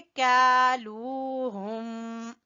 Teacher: हा को गले के सबसे नीचे वाले हिस्से से निकालेंगे